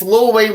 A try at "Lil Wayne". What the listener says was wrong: Oh, you sounds like you're saying Little.